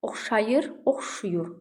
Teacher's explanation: Bəzən A saiti U saitinə keçir tələffüzdə. Oxşayır, oxşuyur, A uya keçir.